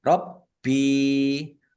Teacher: Baknya dibaca double ada tasdidnya. Ditekan dan ditahan.